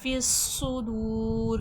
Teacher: दू में वाव मद्दे खींच कर और र ज़बर ज़ेर पे जब हरकात का व होता है तो वो लफज़ साकिन हो जाता है। सुदूर का सीन हुफ सफीर है सख्ती सीटी के साथ · فس میں موٹا بھی کرا جائے گا اور سختی سیٹھی بھی آئے گی کیونکہ حرف مستعلیہ بھی ہے اور حرف صفیر بھی ہے صاد